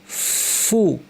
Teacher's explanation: সেই হরফটা উচ্চারণের জন্য আমার মুখকে রেডি করতে হবে। ফা উচ্চারণ সময় কি করি? দাঁতকে ঠোটে লাগাই